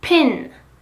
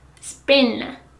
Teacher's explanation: The P in pin is aspirated, whereas it is not in spin.